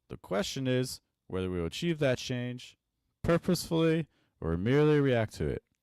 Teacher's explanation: You're just repeating the same pitch ranges over and over again. We're stuck in the mid. We're not using any high. We're not using any low. Every time we start a new group, we're just restarting the the same pitch range over and over again.